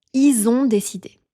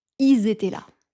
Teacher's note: au pluriel, le pronom il est aussi souvent prononcé is avec la liaison du mot suivant.